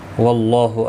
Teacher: اللہ کا لام زبر کی وجہ سے پر پڑھا جائے گا، اس کے اوپر کھڑی زبر بھی ہے، ایک الف کی مقدار کے برابر کھینچ کر پڑھیں گے۔